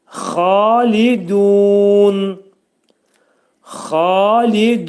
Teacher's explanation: Xa qalın, boğazın yuxarısında, li incə, du incə